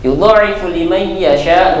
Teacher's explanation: nun mati bertemu dengan ya, masuk ke dalam kategori idgham bi gunnah. Yasha'u ini masuk ke dalam kategori mad wajib muttasil karena dalam satu kata ya.